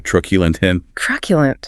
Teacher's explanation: The last syllable is a schwa. · Stress on the first syllable.